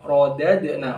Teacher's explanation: ro-nya tebal ya, tafkhim. Rodad, dalnya yang kedua itu qalqalah, rodad.